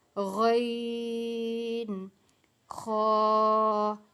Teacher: یہ غین اور خا، یہ اکٹھا ایک ہی مخرج ہے اور حلق کے بالکل اوپر والے حصے سے ادا ہوتا ہے